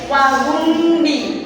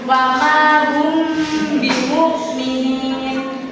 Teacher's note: Nah, ini kan ada mim sukun bertemu dengan huruf ba, berarti bibirnya harus terkatup dan dibaca dengung